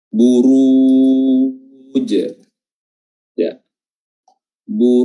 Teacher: Huruf ra-nya di sini tebal, ya, tafkhim karena berharakat dhammah, dan harakat dhammah itu dimaksimalkan dengan cara memonyongkan kedua bibir